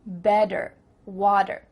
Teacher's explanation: In American English, a T that's between two vowel sounds, it doesn't always have to be a vowel, but between two vowel sounds is going to change to a D. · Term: change a T sound